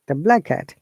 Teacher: is that if a what has ending in a consonant and the next word starts the same consonant same sound we have to remove one sound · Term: connected speech